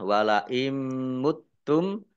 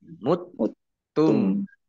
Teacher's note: bhunah masuk dengan mendengung yaitu mendengung mim ditandai mimnya ada tasdidnya mim tasdid dibaca ghunah atau mendengung ditahan dua harakat